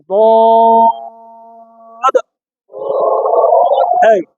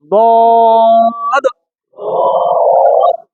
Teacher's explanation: জিব্বা সামনের দাঁতে লাগবে না, মারির দাঁতের গোড়া থেকে মোটা ভাবে আদায় হবে। মারির দাঁতের গোড়া থেকে মোটা মানে ঠোঁট গোল করতে হবে।